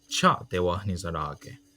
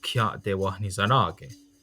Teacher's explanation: Akwesasne has also changed THIA clusters pronounced Cha into KHIA clusters pronounced Kya.